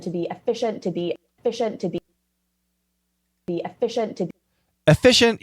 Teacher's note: Even though she says efficient with definitely a short E, I would call it the short E version of schwa.